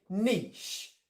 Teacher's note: british english we say niche so we drop the t the t disappears we have a long e and then we still get the ish on the end